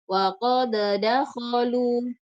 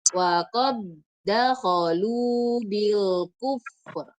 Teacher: Jadi tidak boleh dibaca wa qad dakhalu. Langsung dilebur ke da berikutnya dengan menghilangkan sifat qalqalahnya.